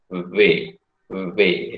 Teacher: ketika mengucapkan V, ya, saudara akan merasa getaran yang berlebih di pita suara